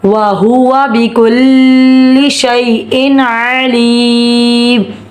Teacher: شئی پہ یالین ہو رہا ہے, بغیر کھینچے پڑھیں گے